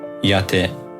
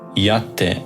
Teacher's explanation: the ru doesn't become te but rather tte, with a double consonant